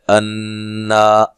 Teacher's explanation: انا نون مشدد پہ غنہ ضروری ہے